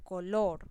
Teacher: yo hago la mayor intensidad o fuerza en la sílaba lor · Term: acento prosódico